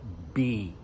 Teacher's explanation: What happens is for B almost looks like what our lips do. We put our lips together, B. It's called a bilabial sound because labial means lips, bi means two, bilabial.